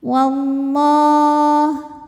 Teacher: Lam jalalah dibunyikan secara tafkhim karena huruf sebelumnya berbaris fathah, maka dibacanya tebal